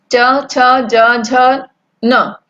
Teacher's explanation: च छ ज झ न जब हम बोलते हैं तो हमारी जीभ जो है तालू पर टकराती है, जीभ दांतों के पीछे। तो ये जो है च वर्ग का उच्चारण स्थान तालु है।